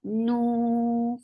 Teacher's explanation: circle your lips and make it 2 counts long.